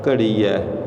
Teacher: ਫਿਰ ਇੱਥੇ ਸਾਧ ਸੰਗਤ ਜੀ ਪਾਠ ਜਿਹੜਾ ਘੜੀ ਹੈ ਤੇ ਥੋੜ੍ਹਾ ਜਿਹਾ ਘੱਗੇ ਨੂੰ ਪੂਰੀ ਆਵਾਜ਼ ਦੇ ਵਿੱਚ ਬੋਲਣਾ ਹੈ, ਕਿਉਂਕਿ ਘੱਗਾ ਵੀ ਦੂਜੇ ਨੰਬਰ 'ਤੇ ਫਿੱਕਾ ਵੀ ਪੈ ਜਾਂਦਾ ਹੈ। ਇਸ ਕਰਕੇ ਇਹ ਜਿਹੜਾ ਪਾਠ ਹੈ ਨਾ ਘੱਗਾ ਪੂਰੀ ਆਵਾਜ਼ ਦੇ ਵਿੱਚ ਨਿਕਲਦਾ ਹੈ, ਘੜੀ ਹੈ।